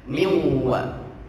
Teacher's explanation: Ya, ini dimasukkan namanya miwa. Nunnya dileburkan, dimasukkan pada huruf yang berharokat. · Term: idgham